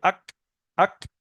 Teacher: আক, একটা ছোট্ট হাওয়া বেরিয়ে আসবে, আক, আক। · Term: কাফ